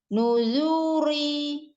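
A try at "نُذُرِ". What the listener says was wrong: Zunya tidak naik atau ada mat di situ lah, tapi langsung nuzuri. Yang mat justru yang ri. Dia langsung tipis.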